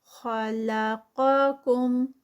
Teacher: خا ہیوی لام لائٹ قا پھر ہیوی اور کم پھر لائٹ